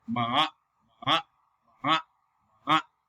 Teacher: Falling and rising tone, like third tone. It will be fall first and then will be rising.